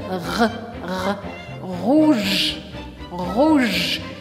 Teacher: O rouge é um ótimo exemplo pra gente arranhar, dar aquela arranhada na garganta.